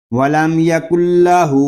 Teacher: ادغام یار مالون بلا غنہ کریں گے، یعنی بغیر غننے کے، اس میں ہم غنہ نہیں کریں گے